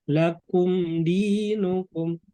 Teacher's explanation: Kasroh ketemu ya mati. Jadi harus dibaca 2 harokat itu Bapak Ibu. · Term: Mat tabi'i